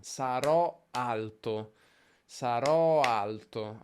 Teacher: Abbiamo due accenti di fila.